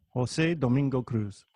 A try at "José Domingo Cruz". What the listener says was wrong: Yeah, it's not a Z. It's the Cruz is an S sound in Spanish, and the Jose that became Jose in Americanized, that even I accept, and even I, when I introduce myself, I use, that's actually Jose. So it's actually the katakana pronunciation. Jose Domingo Cruz.